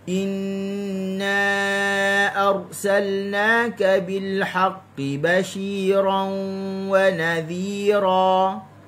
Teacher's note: Inna, panjang 4 harakat.